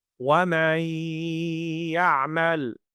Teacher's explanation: So what's happening there is that the noon sound gets merged into the, or blended into the ya sound